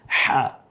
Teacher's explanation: এটা কণ্ঠনালীতে যে চাপ দিয়ে সেজন্য জাস্ট কণ্ঠনালীর মিডিয়াল থেকে হা এভাবে উচ্চারিত হবে, একটু ফ্যাঁসা আওয়াজে